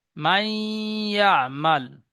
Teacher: তানবিন বা নুন সাকিনের আওয়াজকে নাকে তুলে একালি পরিমাণ গুণনা করে পড়তে হবে। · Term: ঈদগামে নাকিস